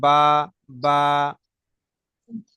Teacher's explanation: বাটা ঠোঁটের ভিজে ভাব, সাধারণ আমরা যেমন কথা বলি ঠিক তেমনই ভাবে উচ্চারিত হয়